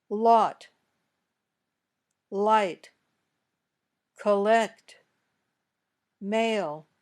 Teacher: the air comes out around the sides of your tongue very smoothly